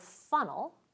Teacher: here's an example of a liquid consonant becoming syllabic